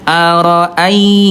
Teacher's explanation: Sehingga ketika ya bunda bertemu dengan ya sukun sebelumnya fathah, maka sempurnakan sifat rokhwahnya dan juga linnya, yaitu alirkan dengan lembut